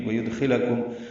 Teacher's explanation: دال ساکن پہ قلقلہ ہے, خو پر پڑھیں گے, لام باریک پڑھیں گے. کم میں میم ساکن پہ اظہار ہے.